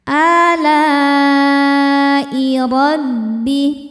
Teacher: Hamzahnya i ada pada kata alai, maka lamnya panjang, boleh 4 boleh 5 harokat. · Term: mad wajib muttasil